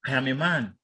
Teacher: that's a statement with intonation going down towards the tonic syllable. The intonation is expected to fall. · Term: falling intonation